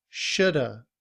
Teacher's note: in reduced form, we combine the word should and have together. We drop the sound of V And the sound a becomes as the schwa, which is pronounced And so we have the word shoulda, which is a combination of should and have.